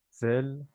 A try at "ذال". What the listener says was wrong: Zal. pas faire zay. Tu vois, pas zel. Ça, c'est à l'égyptienne. Zal.